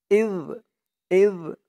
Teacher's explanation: ধরবে ইয ইয জালের উচ্চারণটা কিন্তু একদম নরম পাতলা করতে হবে। জিহ্বার মাথা উপরের দাঁতের মাথার সাথে লাগবে জালের উচ্চারণটা করার সময়।